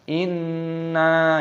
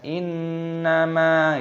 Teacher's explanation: Nah, jangan sampai nunnya juga ikutan panjangkan. Misalkan inna itu panjang nunnya, beda dengan innama itu pendek. Nah, di sini nunnya pendek.